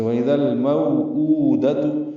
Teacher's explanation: مو اور او واضح فرق ہے وولین اور واو مدہ کا